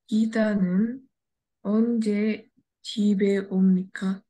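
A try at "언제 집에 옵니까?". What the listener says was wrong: Yes, very good.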